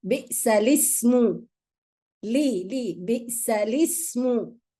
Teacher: We don't pronounce the hamza in ism.